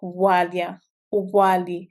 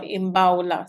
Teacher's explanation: sometimes B is pronounced very silently, so making it sound like walia, wali, or it's more pronounced, so imbaula. So there's more emphasis or stress on the B sound. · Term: bilabial fricative